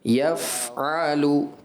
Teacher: جب آپ آواز کو بند کریں گے نا تو فا کامل ادا نہیں ہوگا، آپ کو آواز اور سانس جاری رکھنا ہوتا ہے۔ جیسے آپ کر دیتے ہیں اس کو عما یفعلو، یا نہیں، یف جاری ہے، سانس بھی آواز بھی، یفعلو، ٹھیک ہے، تو یہ اس کی بہتر ادائیگی ہے۔